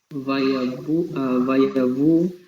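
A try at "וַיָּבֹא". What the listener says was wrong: Okay, that vowel there is O. Bo.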